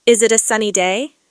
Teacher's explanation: notice how my intonation Rises at the end as if I'm asking a question